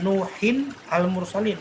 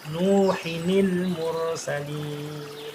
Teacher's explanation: Jadi tanwin tadi diganti dengan nun berharokat kasroh, disebut dengan nun iwad atau nun wasol atau nun wiqoyah.